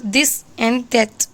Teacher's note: This sound represents the voiced dental fricative sound.